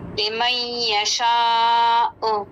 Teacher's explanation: एंड में हमज़ा को वाज़े करेंगे, उसकी साउंड आनी चाहिए हमज़ा की।